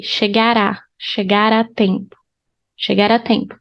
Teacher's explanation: you can link R with the A.